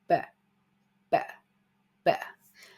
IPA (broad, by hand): b